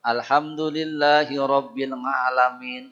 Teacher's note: Nah, ain itu ngawahannya eng, tapi keluarnya a. Jangan kayak orang Jawa, eng keluar eng